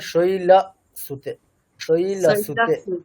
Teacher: অকারটা যেন ওকারের কাছাকাছি না হয়ে যায়, মানে অকারটা যেন অকারই থাকে, মানে আমরা উচ্চারণে কি হচ্ছে ওকার হচ্ছেও না কিন্তু অকারও হচ্ছে না। · বাংলার একটা প্রভাব আছে না, মানে অকারকে ওকার করে দেওয়া, মানে উচ্চারণে কি হচ্ছে অকারটা পুরোপুরি ওকার হচ্ছে না, কিন্তু অকারও হচ্ছে না, মানে শৈলসুতে একটা ওকারের একটা প্রভাব দেখা যাচ্ছে। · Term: বাংলার প্রভাব